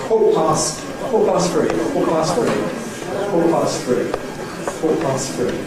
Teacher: it's an absolute requirement that you use a glottal stop for the T